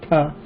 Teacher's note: the dental just touches the rim of the teeth